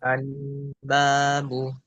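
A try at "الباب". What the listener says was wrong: Nah, di sini jangan sampai terlalu lama. Al-babu. Nah, itu terlalu lama. Atau yang kedua, disidah, dibuat macet kuat. Nah, itu salah juga. Al-babu. Nah, itu juga salah. Yang benar pertengahan. kuat dan tidak terlalu mengalir. Al-babu, silakan.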